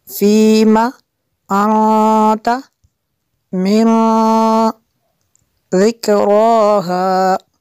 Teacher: فی کو لمبا کرنا ہے، کھینچنا ہے، اور میم کو نہیں کھینچ سکتے۔